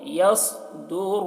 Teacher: صوت کو موٹا کر کے یصدر اور را کو بھی موٹا کر کے پڑھ رہے ہیں